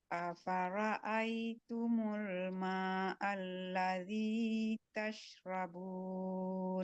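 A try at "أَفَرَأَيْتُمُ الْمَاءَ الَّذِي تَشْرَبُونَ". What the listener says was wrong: Oke, maknya panjangin lagi sedikit lagi. Buat 5 harkat. Afara'aitumul ma' buat 5 harkat. Afara'aitumul ma'a.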